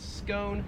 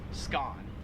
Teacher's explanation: we pronounce that in american english as scone whereas in australian english it is pronounced skaan